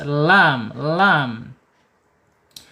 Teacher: Kemudian lam secara makhraj ada di alisan ya. Ujung tepi lidah menyentuh langit-langit yang depan ya pinggir atau mendekati pangkal gigi seri atas.